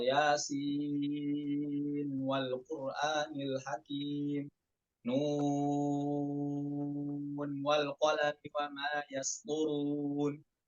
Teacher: Imam Hafaz dari Thoriq Syatibiyah nggak bisa dibaca idgham, namun dibaca izhar ketika wasol